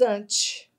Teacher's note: Olha só o e com som de i.